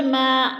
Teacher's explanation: الف مدہ کو پھر ہم نے ایک الف 2 حرکات کے برابر کھینچ کر پڑھنا ہے